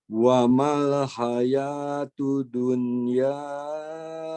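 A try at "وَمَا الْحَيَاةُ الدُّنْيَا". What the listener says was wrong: Dalnya ditahan. Wa mal hayatud dunya.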